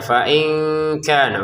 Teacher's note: seorang nun sukun yang diikuti oleh kaf. Ya, kami membacanya dengan samar-samar. "Fain kana", untuk 'ka', panjangnya dua ketukan.